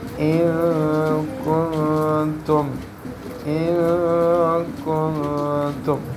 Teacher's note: دونوں نون ساکن میں اخفا ہو رہا ہے